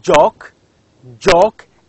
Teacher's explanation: you can feel that there is a sound of d before j